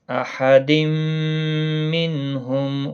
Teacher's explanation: نون ساکن کے بعد ہا آیا ہے، اظہار حلقی ہوگا، غنہ نہیں ہوگا۔